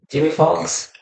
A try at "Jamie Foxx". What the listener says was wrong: You're saying his name weird. Why are you saying it like that? It's Jamie Foxx. It sounds like you're saying Jimmy Fox, and I'm like, Jimmy. It's Jamie.